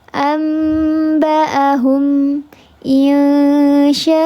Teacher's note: Sama tiga harakat tapi tidak seluruhnya masuk ke hidung. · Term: ghunah yang kamil